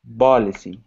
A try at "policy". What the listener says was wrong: I'm still hearing policy. Okay, so the difference between P and B. So first, policy. That's B versus pa, b. Do you notice that when I say pa, there's like a narrowing of my lips?